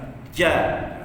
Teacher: Atas lidah kita kena pada langit yang keras. Ja. Jadi standby lidah kat bawah tu. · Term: huruf jim